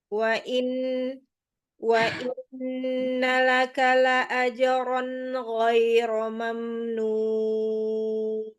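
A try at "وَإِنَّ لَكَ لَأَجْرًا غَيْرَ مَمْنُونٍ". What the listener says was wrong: Ahsanti. Ahsanti.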